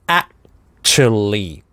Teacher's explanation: здесь /æ/ начинается с твердого приступа после паузы. А /k/ безрелизный - actually.